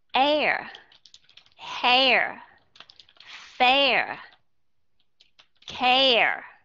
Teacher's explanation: Air nó hơi trại trại đi một chút xíu nó không còn là A